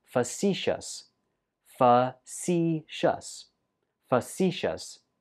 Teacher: Stress goes on the second syllable.